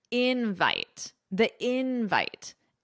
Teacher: But with nouns, the syllable stress is on the first syllable, invite.